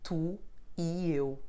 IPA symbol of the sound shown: i